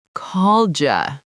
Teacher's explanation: The D and the Y mixed together, it sounds like called ya. Called ya. Yes, now put it together.